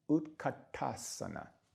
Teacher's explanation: Notice this has that T with the dot below it. So that's a T that's made not with the tip of the tongue behind the teeth, but a little further back.